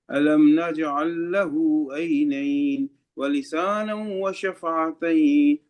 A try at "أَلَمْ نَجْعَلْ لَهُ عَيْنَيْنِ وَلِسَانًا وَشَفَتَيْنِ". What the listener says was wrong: اس کو لمبا نہیں کرو، ولسانا وشفتين